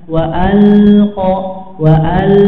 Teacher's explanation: lamnya berharakat sukun, maka perhatikan nggak boleh ada suara pantulan tapi ditahan. Wa'alqa wa'al ya, ditahan.